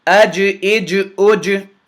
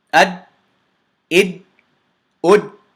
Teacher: That's that slight bounce, that differentiation on how I'm pronouncing the jim, that echo on the jim is called the Qalqalah.